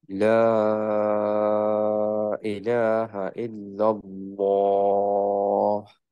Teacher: হায়ের বাতাসটা বেরোতে হবে যাতে বোঝা যায় যে এখানে একটা হা আছে